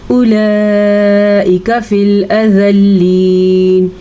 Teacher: یہ جو مد آپ کو اپنی اسکرین پہ نظر آ رہی ہے یہ 5 سے 6 حرکات عربیہ کے برابر لمبی کی جاتی ہے. اور اس لام کو بالکل بھی پر نہیں پڑھنا کیونکہ لام پر پڑھا ہی نہیں جاتا، صرف اللہ کا نام پر پڑھا جاتا ہے.